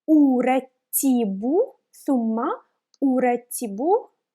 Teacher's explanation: We have alif with dhamma above it. I will pronounce it like u, not like a.